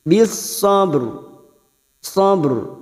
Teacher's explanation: huruf Shad bis bisobr pada saat dibaca wakqaf maka di sini hukumnya ro tafkim ro yang dibaca tebal sebab ro mati karena wakaf